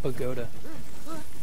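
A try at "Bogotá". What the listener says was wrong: I think it's just the emphasis. Bogota.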